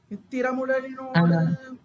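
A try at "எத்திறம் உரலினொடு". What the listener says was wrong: நோடு இருக்கு. எனக்கு இங்க புஸ்தகத்துல ஒத்த கொம்பு போட்டிருக்குங்க.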